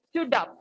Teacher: So when I was reading, I just read it like stood up, a single word. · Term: catenation